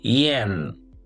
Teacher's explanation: This word is pronounced as /jen/. It has a short /e/ sound, like pen. It starts with a /j/ sound, like yes.